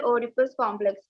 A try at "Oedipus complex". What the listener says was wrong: Oedipus complex. O is silent there.